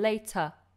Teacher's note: often with an ER ending like water, later, better, it ends in an open, relaxed schwa sound.